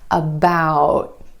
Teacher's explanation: Instead of that true T at the end, most Americans are going to hold that T about. My tongue tip goes to the ridge behind my teeth and just stays there. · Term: held T